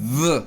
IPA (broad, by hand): ð